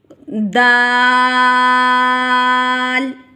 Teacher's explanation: نطعیہ کا مطلب ہے زبان کی نوک جب اوپر کے دانتوں کی جڑ سے لگے تو یہ حروف ادا ہوتا ہے. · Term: حروف نطعیہ